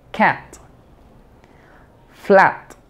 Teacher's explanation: aquí tenemos una a pero muy abierta así tienes que abrir tu boca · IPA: æ